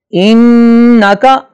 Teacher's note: انک نون پر شد ہے لہذا اس پہ غنہ کرنا ضروری ہے